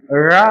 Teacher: ழ அப்படின்னு சொல்றது நாவின் நுனி மேல் நோக்கி வருடுவதால் பிறக்கிறது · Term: சிறப்பு லகரம்